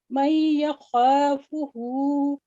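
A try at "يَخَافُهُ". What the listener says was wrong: खा को थोड़ा सा लंबा कर जैसे हु पढ़ा ना आपने, इतना ही खा भी उतना ही होना चाहिए ना। एक ही जितना टाइम है तो फिर दोनों एक जितना ही पढ़े ना।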